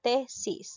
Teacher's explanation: sílaba tónica tesis la que suena más es la sílaba t es una palabra grave porque lleva acento en la penúltima sílaba